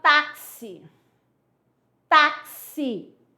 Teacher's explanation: apareceu um X que ele tem um som de KS. Algumas pessoas vão dizer que CS, mas, ó, dois sons.